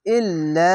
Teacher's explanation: লামের ওপরে তাসদিদ আছে এবং তাসদিদওয়ালা অক্ষরকে দুবার পড়তে হবে